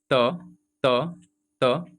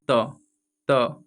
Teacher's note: जब आप बोलिएगा त त त, ठीक है, तो आपको जो जीवान है मतलब जीवा है वो सीधे आपके जाके दांत से टच करते हैं